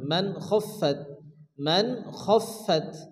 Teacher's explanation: ওয়া আম্মা, ওয়া আম্মা মান খাফাত, এখানে কিন্তু নুন সাকিন, নুন সাকিনের পরে ইজহারে হালকির খ আসছে, এখানে কোনো গুণ হবে না।